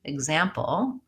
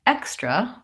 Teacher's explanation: When the X is before the stressed vowel, we pronounce it as a GZ. So for example, if you look at that word, example, there's the stress is on the second syllable, and so we have the GZ.